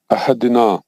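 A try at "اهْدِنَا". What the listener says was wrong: आदिना नहीं, इहिदीना जेर है ना हजरत। इहिदीना।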